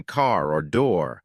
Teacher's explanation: the softer sound in American English like in car or door which has a bit of a rolling sound